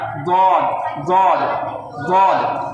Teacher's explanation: এর মাখরাজ হচ্ছে জিভের এক সাইড, উপরে দাঁতের গোড়া